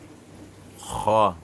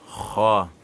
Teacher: Kha, on prononce du fond de la langue